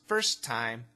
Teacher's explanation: First time, connect the T sounds, first time.